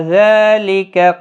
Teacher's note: لام کے اوپر کھڑی زبر ہے اور زال کے اوپر بھی کھڑی زبر ہے، دونوں کو ایک ایک الف کی مقدار کے برابر کھینچ کر پڑھیں گے، باقی کسی بھی حرکت والے حرف کو کھینچنا نہیں۔